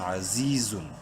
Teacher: عین زبر ع، زا یا زیر زی، یا مدہ ہے، زا کو ایک الف کے برابر لمبا کریں گے. عزیز زادو پیزن، عزیزن.